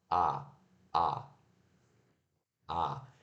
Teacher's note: Olha só que a sua língua está lá embaixo, né? O mais para baixo que ela conseguiria, né?